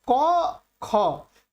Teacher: ये दोनों जो होते हैं ये अघोष होते हैं, केवल श्वास का प्रयोग होता है।